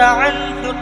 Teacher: اب آپ یہاں غور کریں، نون ساکن ہے، اور نون ساکن کے بعد حروف حلقے میں سے ہا موجود ہیں، تو نون کی آواز کو ظاہر کر کے پڑھیں گے، یعنی یہاں پر اظہار ہوگا۔